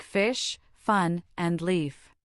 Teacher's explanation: Its name is EF and its primary sound is the unvoiced. A soft breathy noise created by gently placing your top teeth on your bottom lip and pushing air through. You can feel the air on your hand if you hold it in front of your mouth. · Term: unvoiced F